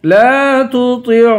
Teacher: لا تطعہ، لام کو اس والے لام کو ایک الف کی مقدار کھینچ کے پڑھیں گے، تا اور طا میں فرق کریں گے، طا کو پر پڑھیں گے۔